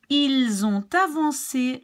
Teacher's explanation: Ils ont avancé l'heure d'été. Ils ont, so the S is linked to the O. The T is linked to the A.